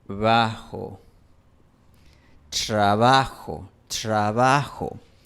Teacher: r también se asibila en la Sierra Ecuatoriana cuando está dentro del grupo tr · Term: asibilación de r